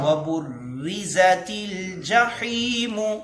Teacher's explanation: را پر ٹھہراؤ کرنا ہے، را پر شد ہے